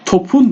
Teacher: mesela dikkat edin un Ekin almasına rağmen topun diye kalıyor yani p harfi yumuşayıp B'ye dönüşmüyor